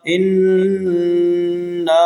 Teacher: حمزہ نون زیر ان، نون مد الف زبر نا، اننا۔ یہاں ہم نے نون مشدد ہونے کی وجہ سے غنہ کرنا ہے، یعنی ناک میں آواز دے کر جانی ہے۔